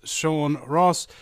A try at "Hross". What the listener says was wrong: Yeah, well, you don't pronounce the H. Actually, it's an old Nordic name, and if you interchange the R and the O, you get horse. And if you take away the H, it gets Ross, like in German.